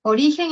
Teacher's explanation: Si atendemos a la intensidad, que es el color rojo, podemos ver que en origen la sílaba tónica es ri, y las dos que quedan, la o y la gen, la sílaba gen, son átonas